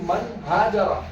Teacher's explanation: من ہاجرہ کے اندر نون ساکن ہے اور ہا اس کے بعد میں آیا ہے, اس لیے یہاں پر بھی غنہ نہیں کریں گے